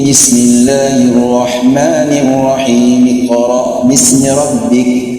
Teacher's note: Jadi mimnya kita kasrahkan, langsung masuk ya.